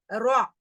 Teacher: நுனி நாக்கை மேற்பற்களின் ஈர்களுக்கு மேலே தொடவும். அதே இடம் தான்.